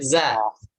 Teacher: Za itu yang mengalir adalah suara, bukan udara. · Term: jahar